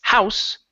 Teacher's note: With the unvoiced S, house, that's the noun, the normal one that everyone knows.